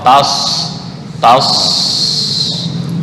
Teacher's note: Ujung lidah bertemu dengan gigi seri bawah. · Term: shad